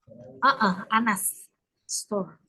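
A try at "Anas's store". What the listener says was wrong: Yang benar ini. Anas store, tapi bacanya Anases. Anases store. Karena belakangnya pakai S.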